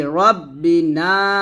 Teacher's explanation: রব্বিনা নাতে তিন আলিফ টান দিতে হবে